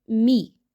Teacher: اور میم کی زیر کو مجھول انداز میں نہیں پڑھنا۔